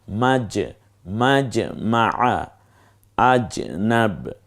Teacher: জিহ্বার মাঝখানে ওই বরাবর তালু অর্থাৎ জিহ্বার শূন্য মুখের মধ্যস্থান থেকে উচ্চারিত হয়